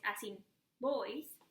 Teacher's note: if you want to say boys, as in boys, you need to use your two lips together.